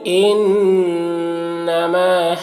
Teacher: ان نون مشدد غنہ کے ساتھ پڑھیں گے